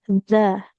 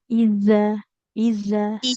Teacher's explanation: zalnya jangan jadi da. Ujung lidahnya tampilkan ke ujung gigi seri atas.